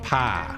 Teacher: in Southern American English, but also Southern Ohioan, pie might become like pa. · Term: monophthongization